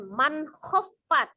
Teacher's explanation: Nun sukun atau tanwin bertemu dengan salah satu huruf yang keluar dari al-halqi, ada alif, ha, ha, ain, kemudian ghain dan kha salah satunya ya. Maka dihukumi izhar, dibaca tebal, dibaca jelas, tidak ditahan ya, dibaca jelas ya